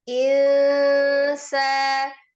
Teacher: Ikhfanya yang tengah-tengah ikhfa ausat insa disamarkan disertai dengan ghunah